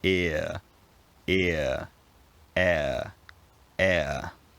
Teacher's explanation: central position while you're pronouncing the vowel ear ear air air the r sound has become part of the vowel sound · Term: centering diphthongs